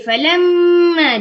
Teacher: falamma dengung dua harakat wajibal gunnah